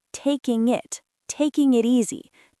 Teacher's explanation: we link the G in taking to the I in it